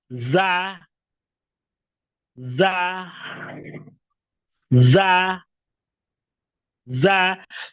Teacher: cukup ditempelkan tempat tumbuh gigi seri bagian bawah tengahnya naik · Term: huruf Za